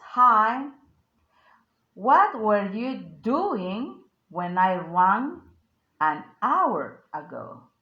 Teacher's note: The emphasized words hi, doing, rang an hour